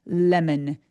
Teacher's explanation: 혀끝이 윗니를 꾹 눌러내요. 완전 또렷하게. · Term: L 소리